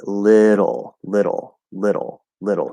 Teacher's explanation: it's not an L, it's a flap D, followed by an L. um, and so that can kind of, especially depending on your native language, that can kind of maybe give the illusion that there's sort of an L there, but it's not.